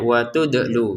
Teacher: huruf dalnya dipantulkan ya, wa tudlu gitu.